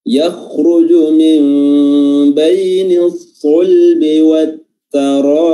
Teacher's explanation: Ya, yakhruju huruf ra-nya tebal, ya, karena berharakat dhammah.